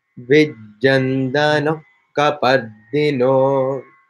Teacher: the visarga is followed by ka, becomes like a kh